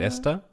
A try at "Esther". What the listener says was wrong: Where's the th? Where's the it's Esther. No, it is Esther. It's not Esther.